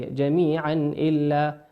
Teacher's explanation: جميعا تنوين أتى بعده حرف الهمزة، والهمزة من حروف الإظهار تظهر كما هي